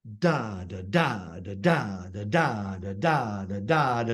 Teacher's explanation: So stressed, unstressed, stressed, unstressed, straight through. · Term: trochaic